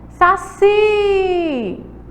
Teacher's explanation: Saci! A sílaba mais forte é o si. Então, ela é uma oxítona. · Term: sílaba tônica